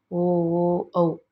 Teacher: ಕಂಠ ಮತ್ತು ತುಟಿಗಳೆರಡರ ಸಹಾಯದಿಂದ ಹುಟ್ಟುವುದರಿಂದ ಇವುಗಳನ್ನು ಕಂಠೋಷ್ಟ ವರ್ಣಗಳೆಂದು ಕರೆಸಿಕೊಳ್ಳುತ್ತೇವೆ